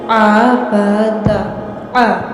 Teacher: عین کی آواز کو آپ نے حلق سے نکالنا ہے